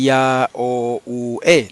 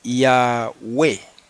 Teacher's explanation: Este diptongo griego siempre se pronuncia U, la O no suena.